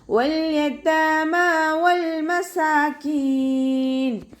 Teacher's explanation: വാവ് ഉച്ചരിക്കുന്ന സമയത്ത് ചുണ്ടുകളൊന്ന് സർക്കിൾ ചെയ്ത് പിടിക്കുക.